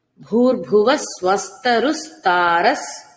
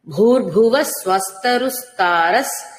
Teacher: రెండు విసర్గలు కూడా సకారాన్నే తీసుకుంటాయి